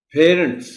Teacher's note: اب یہ جو لفظ ہے پیرنٹس، اس میں آپ ڈکشنری دیکھیں گے تو آپ کو نظر آئے گا کہ پرائمری اسٹریس پی پر ہے